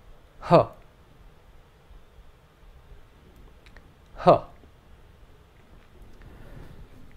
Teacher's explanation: simply an expulsion of air along with the appropriate vowel sound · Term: aspirate